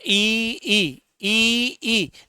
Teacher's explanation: देखो इ का उच्चारण करते तो इसमें भी हमारे ओष्ठ है ना वो गोल नहीं होते हैं।